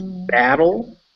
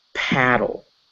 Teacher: paddle so if you put your hand up to your mouth when you say battle you won't really feel the air but we say paddle you want to feel a little of air